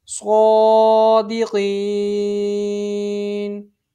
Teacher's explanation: یہاں وقف کی صورت میں یہ ساکن میں تبدیل ہو جائے گا۔ حروف مد کے بعد عارضی سکون، اس صورت میں مد عارض اس کو 3 انگلی کے برابر کھینچ کے پڑھا جاتا ہے